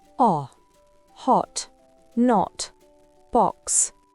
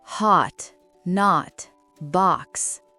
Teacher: Mais en [musique] américain, ce son devient un o très ouvert, presque comme un a